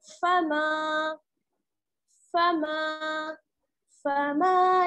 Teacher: मीम में क्या है, अलिफ मद्दा जुड़ा हुआ है, इसलिए मीम को थोड़ा सा खींचेंगे, फा को बिल्कुल नहीं खींचेंगे